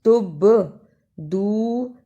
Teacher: تبدو با پر جزم کی صورت میں قلقلہ ہے ، تب دو دال کو واو سے ملانا ہے، اس لیے